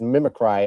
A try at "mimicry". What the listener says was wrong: think you put the emphasis on the wrong syllable there. We all know it's mimicry.